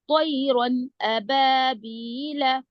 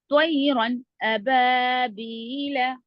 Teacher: ہم نون کی آواز کو ظاہر کر کے بلا غنہ کی جلد پڑھیں گے. جیسے طیرن ابابیل، رن جلدی پڑھیں گے. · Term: اظہار